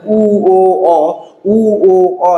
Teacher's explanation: ঠোঁট গোলাকৃত হয়ে যাচ্ছে।